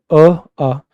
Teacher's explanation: जब बोलते हैं आ, तो अपनी जीभ कहीं ना कहीं बीच में ही ठहर जाती है